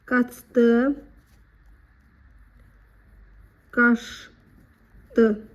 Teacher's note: Ç isə Ş kimi tələffüz oluna bilir. Deməli, bundan sonra D, T, L, Z, S, N samitlərlə başlayan söz gəldikdə Ç, Ş kimi.